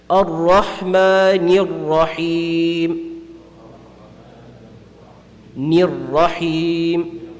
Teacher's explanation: So over here, again, the noon with a kasra has a sound, it has a very low sound, meaning that it has a empty mouth. So ni is pronounced with an empty mouth, but the ra is going to be pronounced with a full mouth. So it's a very, very hard transition over here.